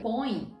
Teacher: Então, veja só, quando você pronuncia põe em mão, isso acontece. Então, veja que o E de põe acaba ficando com um som de I. E aqui vai funcionar como uma semivogal.